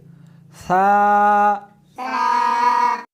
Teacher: اس حرف کو زبان کے اوپر کے تالو سے ملا کر پڑھیں گے۔ تا اس حرف کو زبان کو دونوں دانتوں کے درمیان رکھ کر پڑھیں گے۔ ثا شاباش۔